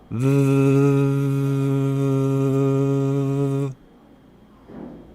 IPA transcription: ð